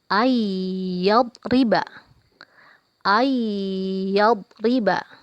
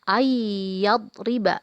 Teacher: ada nun mati bertemu dengan huruf ya dibaca dengung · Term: idgham maal ghunnah